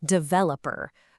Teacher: It is so common to hear developer with all the energy on that first syllable. But the correct way, the way that just flows more naturally, puts the emphasis smack in the middle